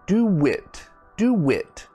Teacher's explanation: we add like a w sound do wit do wit do it now do it now or